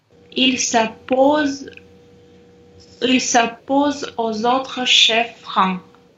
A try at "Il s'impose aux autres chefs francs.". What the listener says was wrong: Ouais, c'est bien, très bien.